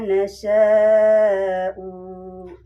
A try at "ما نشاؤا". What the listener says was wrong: Nah, kalau di wakaf U-nya jangan dibaca. Beda dengan di berjanji. Di berjanji itu bukan pemanjang tapi enggak ada tanda sukun ya. Nah, itu mah alif parikoh namanya. Manasya aja. Manasya. Kecuali ada sukun ya, misalnya hamzah wawu sukun domah. Kan eta aya naon matabi'inya, sya teh matabi'i bertemu hamzah. Hamzahna teh u tah.